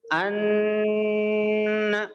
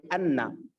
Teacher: اظہار نون ساکن یا تنوین کے بعد اگر حروف حلقی میں سے کوئی حرف آتا ہے تو نون کی آواز کو ظاہر کر کے بغیر غنہ کے پڑھتے ہیں